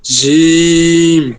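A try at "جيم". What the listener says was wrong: আরো শক্ত, কোনো শব্দ আসবে না, আরো শব্দ আসবে না। এই যেমন এটা শব্দ কেন আসে, কারণ জিহ্বার আগাটা আপনি ব্যবহার করেন দাঁতের সাথে, জিহ্বার আগা দাঁতে লাগাবেন না, জিহ্বাটা ভিতরে নিয়ে যান, জি, জি, জি, কথা আছে, সেটা হচ্ছে যে হরফ, হরফ পড়তে গেলে এই যে এখন যেগুলো আমরা পড়তেছি, আমি বলতেছি যে এটা জিহ্বার মধ্যখানটা তালুতে গিয়ে লাগবে, এটা বলতেছি, ঠিক আছে, কিন্তু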